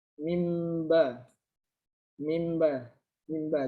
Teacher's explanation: diubah menjadi suara mim dengan disertai dengan gunnah atau dengung.